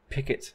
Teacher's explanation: an aspirated P like in the word picot at the beginning whether we have this puff of air coming out of our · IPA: [pʰ]